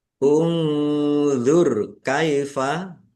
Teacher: nun sukun bertemu dengan huruf dha, bacaan ikhfa dibaca samar-samar.